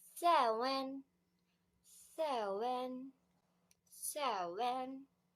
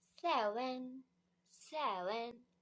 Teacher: in Thailand accent, the letter V will change to the letter W. So it's gonna be like seven, seven.